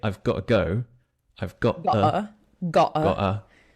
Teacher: we'd have to do the glottal stop and say I've I might he I might say I've got